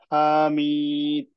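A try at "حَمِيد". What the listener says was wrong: হাটা টান হয়ে যাচ্ছে।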